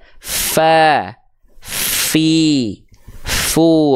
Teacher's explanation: huruf fa dia punya sifat hams, tapi si kadarnya dia mengalir. Tuh, ngalir dia.